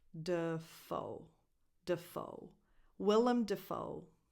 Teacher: The stress goes on the second syllable in the last name, foe